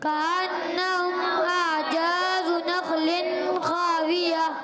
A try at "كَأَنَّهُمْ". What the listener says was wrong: اچھا، آپ سے 2 غلطیاں ہو رہی ہیں، زا کی ادائیگی درست نہیں آ رہی، اور کأنہم کا غنہ آپ چھوڑ دیتے ہیں، ایسا نہیں کریں، ٹھیک ہے؟